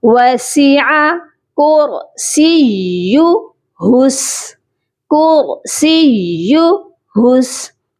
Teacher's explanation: اور یہاں پر بہت سے لوگ کیا کرتے ہیں, سین یا زیر سی یا مدہ بنا دیتے ہیں, کرسی حس. تو ہم نے جو ہے یا کو سختی سے پڑھنا ہے اور اس کے بعد ہا کو سین کے ساتھ ملانا. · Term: یا مشدد